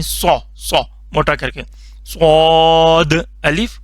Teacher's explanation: صاد موٹا کر کے پڑھنا ہے. سین کی ساؤنڈ نہیں بنانی، تا کی ساؤنڈ نہیں بنانی. سو سو موٹا کر کے صاد الف.